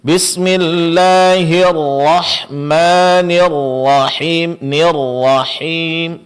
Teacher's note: tasydid pada huruf ra di sini dijelaskan dengan sedikit berikan penekanan, Pak. Kemudian huruf ra ditebalkan.